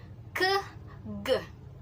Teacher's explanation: this sound is held tightly enough to block the passage of air